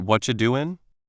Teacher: the T sound in what are you doing can sometimes sound more like a ch sound, making it what you doing? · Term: Changing sounds